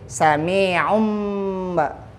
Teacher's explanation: Jadi dhammah tainnya, ya, tanwinnya lebih condong ke mim mati. Jadi bukan sami'un.